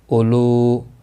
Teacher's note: لو واو مدہ ہے، ایک الف کے برابر کھینچ کر پڑھیں گے۔ تنوین کے بعد حلقی ہا ہے، اظہار حلقی ہوگا، گناہ نہیں کریں گے، را زبر کی وجہ سے پر پڑھا جائے گا۔